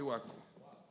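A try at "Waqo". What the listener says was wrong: Yes, we say Wako with a K. Q, not K. Wako with a Q. Yes, Wako with a Q.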